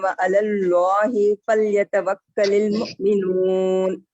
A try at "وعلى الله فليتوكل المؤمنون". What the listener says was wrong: وعلى الله یہاں پر بھی اس میں جلالہ کلام کو پر کیجیے.